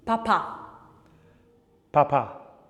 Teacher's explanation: plosive because the air is being exploded, p, and voiced or unvoiced and bilabial. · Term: unvoiced plosive bilabial consonant